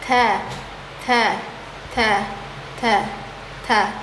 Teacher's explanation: Ta selain huruf hames, dia juga pengucapannya juga syidda, suara tertekan. Ta dia tidak ringan berarti ya, Teman-teman ya. · Ujung lidah bertemu gusi atas. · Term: huruf ta